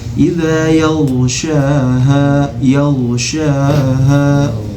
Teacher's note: jangan sampai mantul karena huruf ghain ini bukan qalqalah, dia huruf izhar